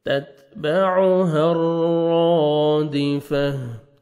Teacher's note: रॉ मुशद्दद है, आपने रॉ को पुर भी करना है, 1 सेकंड खींचना भी, अलिफ मद्दा है और रॉ को मुज़बर भी है, रॉ को मोटा भी करना है।